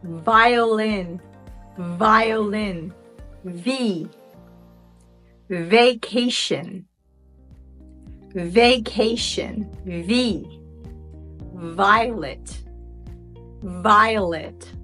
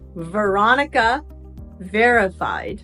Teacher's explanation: The vocal cords vibrate, voicing the V sound.